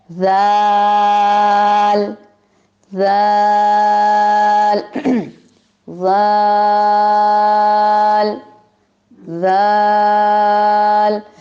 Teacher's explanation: قدرے اوپر والے یعنی ثنایا علیہ کے ساتھ آپ کی زبان ان کے سروں کے ساتھ زیادہ لگے گی